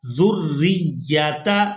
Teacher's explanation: یہاں زال کو را مشدد کے ساتھ ملائیں گے اور اس کو سختی کے ساتھ ادا کریں گے